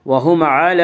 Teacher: لام کے اوپر کھڑا زبر ہے، کھڑا زبر کو 1 الف کے برابر کھینچ کر پڑھیں گے۔